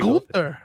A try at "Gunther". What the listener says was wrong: But it says with the ER. No, you gotta say it with an A, buddy. It's like you write it out like Google says it, like the how you pronounce each syllable.